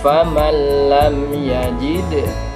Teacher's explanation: Yang ketiga, faman lam yajid, faman nun sukun bertemu lam miliknya idgham bila gunnah, maka cara membacanya tidak boleh mendengung tapi harus gandeng